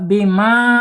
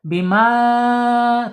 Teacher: Harus bima ya, lepas di mulut. Bima tuh ya, nggak masuk hidung.